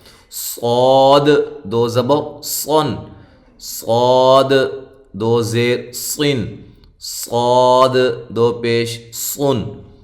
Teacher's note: صاد، اب دیکھیں سین اور صاد میں واضح فرق کیا ہے کہ سین کی باریک سیٹی ہوتی ہے، صاد کی موٹی سیٹی ہوتی ہے، یہ موٹا حرف ہے